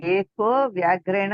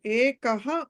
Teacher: ఏకః అని ఉంది. అక్కడ విసర్గ ఒక సంధి జరిగి ఏకో అవుతుంది